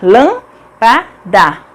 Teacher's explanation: A antepenúltima sílaba é a mais forte.